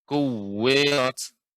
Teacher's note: Kuwirat, tasydid waw lebih ditambahkan lagi, Nek.